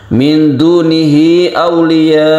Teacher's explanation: Auliya ini kita panjangkan karena dia itu merupakan mad wajib muttasil ya. Wajib artinya harus kita panjangkan.